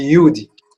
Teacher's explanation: un amuissement du phonème Ha, c'est-à-dire qu'il est rendu muet